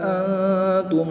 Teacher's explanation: نون ساکن کے بعد تا حروف اخفا میں سے ہے تو یہاں پر اخفا ہوگا یعنی غنہ زمانی کر کے پڑھیں گے